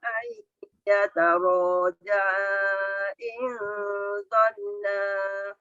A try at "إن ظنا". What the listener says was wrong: Zon tu dengungnya kena ada. In dhanna. Zon dengung dulu baru na.